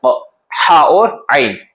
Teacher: हा और आइन का मखरज है वस्ते हलक, यानी हलक का दरमियानी हिस्सा यहां से निकलता है, हा और आइन।